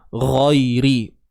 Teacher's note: Ghairi. Huruf ya mati sebelumnya pada atas, kan? Ni bacaan lin lah ni. Bacaan yang berunsur lembut, lunak.